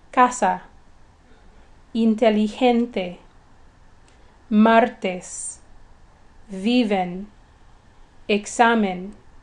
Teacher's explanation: If a multisyllabic word ends in a vowel, an N, or an S, the stress is on the second to the last syllable and no written accent is required